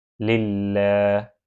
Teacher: لفظ اللہ کے لام کے پیچھے زیر ہے تو یہاں پر لفظ اللہ کے لام کو باریک پڑھا جائے گا